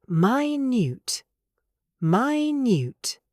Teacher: When we use it as an adjective for size, we say minute. Minute. stress on the second syllable.